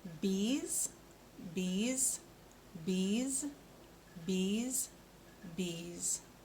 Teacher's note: So at the end, we're making that z sound, and our tongue stays behind our teeth.